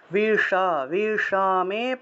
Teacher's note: মূর্ধন্যস্ব থাকলে জিহ্বা উল্টে স উচ্চারণ করতে হয়, জিহ্বাটাকে উল্টিয়ে স উচ্চারণ, বিষা বিষমে সমুপস্থিতাম।